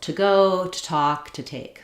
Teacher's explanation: I say I'm going to the place, to the place. In fluent speaking, this word to just sounds like t, or so you can think about it with a UH or just a little t. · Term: reduction